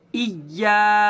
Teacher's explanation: یا کے اوپر تشدید ہے، یا کو 2 بار پڑھیں گے، ایک بار پیچھے والے حرف حمزہ سے ملا کر اور ایک بار خود یا کو